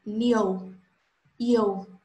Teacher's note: Ditongo crescente. Primeiro uma semivogal, depois uma vogal.